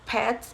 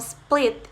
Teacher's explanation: The sound p or p in words such as pets is pronounced differently from the p of split in that the p for pet is accompanied by a strong air stream known as aspiration